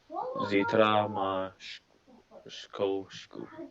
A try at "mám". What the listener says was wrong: But be careful. It's not má, it's mám. Zítra mám.